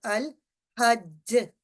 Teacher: اس میں جو مثال ہمارے پاس ہے جیسے الحج، یہ اگر وقف کریں گے تو الحج، تو یہ اس میں لام چونکہ ساکن ہے اور اس کو ہم نے الحج اس لام کو ظاہر کر کے پڑھنا ہے تو یہ ہمارا اظہار لام ساکن ہوگا.